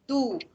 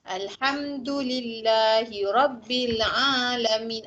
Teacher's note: huruf dal tu dia punya makhraj huruf. Lidah kita ni belakang gigi atas.